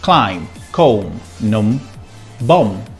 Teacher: when you find a word that finishes with MB, we don't pronounce the B